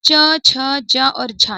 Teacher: च, छ, ज और झ ये भी तालु से उच्चारित हो रहे हैं।